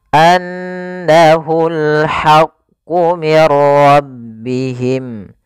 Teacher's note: Kemudian pada lafal al-haqqu di sini ada alif lam, maka ini kita namakan dengan alif lam qamariyah, yaitu alif lam yang ditulis dan dibaca dengan jelas